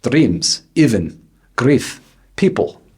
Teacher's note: One measure of the Russian accent is the blurring of tense and lax vowels. The long E becomes muddled, resembling a short I, and even sliding so far as to sound like a short U.